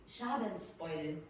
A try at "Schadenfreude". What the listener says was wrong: Okay, beautiful pronunciation.